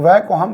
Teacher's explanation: इसका उच्चारण करते समय हम दांतों और होंठों दोनों का उपयोग करते हैं। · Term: लेबियोडेंटल